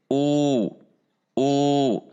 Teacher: u dengan membulatkan bibir